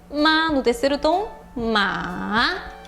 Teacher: você tem que começar no ré, volta para dó e aí sobe tudo